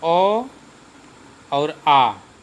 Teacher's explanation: इनका उच्चारण कंठ से होता है, ये कंठ स्वर हैं।